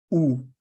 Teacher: Lips are rounded and tense, right? So here, this sound is oo, like rounded lips, and there is tension on your lips.